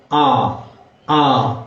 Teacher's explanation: இதனை நாம் கொஞ்சம் தொண்டையிலிருந்து உச்சரிப்போம். ஆ ஆ என்று வாயை திறந்து உச்சரிப்போம்.